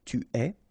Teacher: Okay, so je suis, final S not pronounced, tu es, okay, so it's quite strange because you get this ES, but then phonetically it's est, alright, quite open